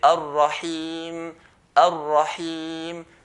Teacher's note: If I say ar-rahim, ar-rahim, the heem part, the makhraj point is the empty part of the throat